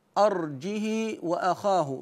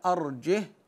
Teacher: حفص قراها بسكون الهاء